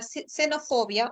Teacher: tienes la fricativa alveolar sorda el sonido de s